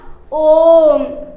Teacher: इसके उच्चारण में 3 मात्रा काल का समय लगता है, इसलिए इन्हें प्लुत स्वर कहते हैं।